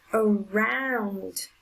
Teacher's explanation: The strongest sound is on the second syllable.